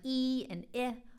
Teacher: Sounds like e and I are at the top front of the mouth